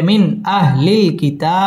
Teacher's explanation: মিন ইজহার গুন্নাহ ছাড়া স্পষ্ট করে পড়তে হবে